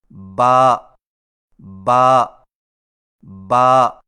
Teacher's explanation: با کی ادائیگی میں ہونٹوں کے گیلے حصے کو سختی سے ملا کر باریک آواز میں پڑھیں، یعنی با با با۔